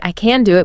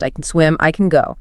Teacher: Often, native speakers don't even really pronounce the can clearly. We use what's called a schwa sound.